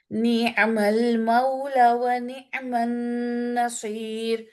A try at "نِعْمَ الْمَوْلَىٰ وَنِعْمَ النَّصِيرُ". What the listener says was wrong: آپ مد اسٹاپ کر رہی ہیں. نعم المولا،